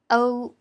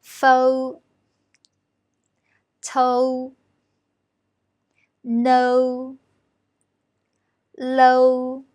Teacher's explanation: When pronouncing o here, the tongue position is slightly forward. The shape of the lips is not so round